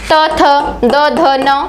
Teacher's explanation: आपका जो त वर्ग होता है वो आपका दंत से उच्चारित होता है